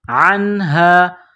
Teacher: عین گلے کے درمیان سے عین کو نکالنا ہے، زور لگا کر عین کو نون کے ساتھ پلس کریں گے.